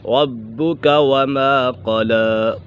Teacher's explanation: با قلقلہ میں سے بھی ہے اور یہ مشدد بھی ہے، اسے جماؤں کے ساتھ پڑھیں گے